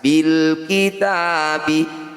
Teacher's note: bunyi lam sukun selesai di sini, tidak boleh ikut di huruf berikutnya